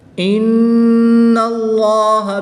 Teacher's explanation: نون مشدد میں غنہ کر کے پڑھیں گے